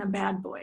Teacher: the duration of the vowel is much longer before that voiced consonant